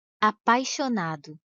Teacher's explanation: o som do I quase não aparece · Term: semivogal